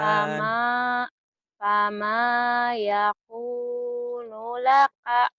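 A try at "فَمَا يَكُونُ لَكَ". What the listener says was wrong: Nunya pendek. Ayo lagi. Fama yakunu laka.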